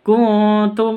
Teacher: nun sukun bertemu dengan ta samar didengungkan ikhfa Hakiki · Bi asma'iha ulai in kuntum non bertemu non sukun bertemu dengan kaf, non mati bertemu dengan kaf samar didengungkan, ikhfa hakiki. Kuntum non sukun bertemu dengan ta samar didengungkan